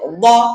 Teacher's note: দাল হলো জিহ্বার আগা সামনের দাঁতের পেট থেকে বা সামনের দাঁতের গোড়া থেকে উচ্চারণ হয় দাল, আর দদটা কিন্তু উচ্চারণ হয় জিহ্বার পাশ থেকে